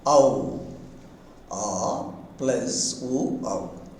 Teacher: A moves towards O and form the compound phoneme, that is the diphthong OW